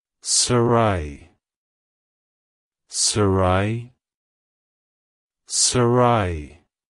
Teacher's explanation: to pronounce it correctly emphasize the second syllable ra and use a soft H sound at the end avoid pronouncing